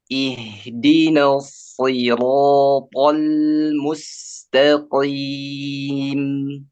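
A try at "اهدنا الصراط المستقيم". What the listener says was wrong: Huruf sodenya belum keluar itu. Desisnya. tertahan. Iya, lidahnya tuh kayaknya apa namanya? Menahan. Anginnya ke atas. Jadi dia desis di sini ya. yang pakai yang mana? Yang lurus ke depan, so atau yang ke samping? yang lurus, ya. Jadi desisnya harus nampak ya, nampak. Jadi hamesnya itu terasa lagi.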